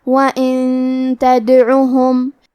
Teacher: وَقْرًا وَإِن، کلمت وَإِن کے آخری میں نون ساکن ہے، پھر حرف التا ہے کلمت تدعوہم، تا حروف الاخفاء میں سے ہے، لہذا ہمیں یہ حکم کو غنہ کے ساتھ ادا کرنا ہے